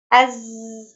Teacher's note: Jadi ketika kita mengucapkan huruf zai, nafasnya tertahan, ya, tidak ada aliran nafas. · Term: jahr